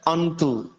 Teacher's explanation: অনুসারটা মাঝখানে আছে, অনুসারের পরের বর্ণটা হচ্ছে তবর্গীয় ধ্বনি। তবর্গীয় ধ্বনির নসিক্য বর্ণ হচ্ছে দন্ত অন, সেজন্য আমাদের অনুসার উচ্চারণ করতে হবে দন্ত অন